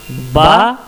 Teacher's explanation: और थोड़ा सा नीचे जाएंगे तो वहाँ से बा निकलेगा। बा अंदरूनी जो दोनों होंठ का तर हिस्सा है, अंदरूनी इंटरनल लिप्स, उससे जो है बा निकलेगा